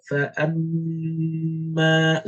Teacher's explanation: So you do the gunna with your nose and you do the doubling. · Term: complete gunna